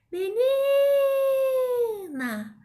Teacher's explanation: observa que eu fiquei mais tempo chamando o ni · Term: sílaba tônica